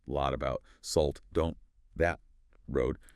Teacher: the very, very frequent use of stopped T and stopped D sounds, mostly at the ends of words or just before another consonant